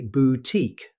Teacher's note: Most native speakers say boutique, stressing the second syllable. Keep that final -tique nice and clear.